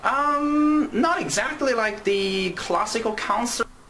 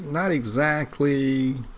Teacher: Notice here his voice rises to show uncertainty.